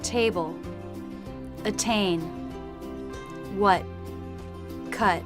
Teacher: in American English they tend to drop the T in the final position